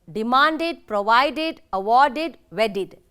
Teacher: ends with ter it takes id sound ot wanted tempted unexpected when the verb ends with d sound and takes ed form then it is pronounced as id